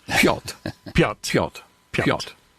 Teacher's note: Piotr is the Polish pronunciation, the proper way to say it. Piotr, there's a slight trill on the R, but you can say it fast, and you can skip the R.